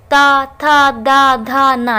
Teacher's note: जब हम इनको बोलते हैं तो अपनी जीभ को कहाँ स्पर्श करते हैं, दांतों में स्पर्श कराते हैं। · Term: दंतय